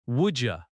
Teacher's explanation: Listen to how would you sounds in American English. It often becomes woulda.